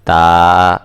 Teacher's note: آپ کی زبان جو ہے وہ دونوں دانتوں کے درمیان ہوگی، اور آپ نے زبان کو زیادہ زور کے ساتھ دبانا نہیں ہے